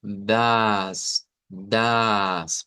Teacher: Aquí solo nos encontramos que podría haber una pequeña variante de la pronunciación de esta, que la A no sea como una A corta, sino que sea una A larga